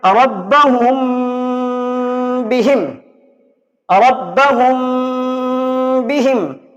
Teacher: اس کے بعد اخفاء شفوی، تو اس کے لیے میں نے یہ با دیا ہے، یعنی میم ساکن کے بعد اگر با آ جائے تو اخفاء شفوی کرنا ہے، یعنی میم ساکن کی آواز کو ناک میں رکھیں گے اور تھوڑا گنگناہٹ کے ساتھ پڑھیں گے، جس طریقے سے آپ یہاں پہ دیکھ رہے ہیں ربہم بہم، ربہم بہم، یعنی میم ساکن کے بعد یہاں پہ با آ رہا ہے۔